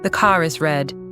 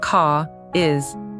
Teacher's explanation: the R comes back to life to link car and is. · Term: linking R